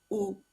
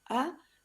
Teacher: el balanceo vocálico del título entre la vocal más plenamente cerrada y la más abierta